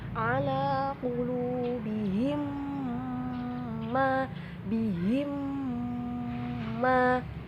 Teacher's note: Cara membacanya adalah sama seperti ikhfa syafawi, itu harus didengungkan dulu. Jangan buru-buru untuk ke huruf selanjutnya, tapi didengungkan dulu atau ditahan dulu. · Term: idgham mimi